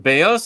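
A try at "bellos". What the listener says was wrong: Bejos. Like stronger pronunciation on the double L.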